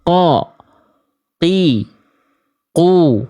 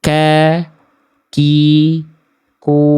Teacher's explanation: Qof lebih dalam, kaf lebih luar.